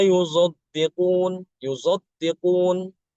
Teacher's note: huruf shadnya itu tidak dibaca murni shad tapi ada dicampur dengan huruf zai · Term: Ismam huruf